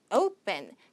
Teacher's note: 강세는 앞에 있는데 요게 이제 된소리 현상이 온다라는 거죠. open.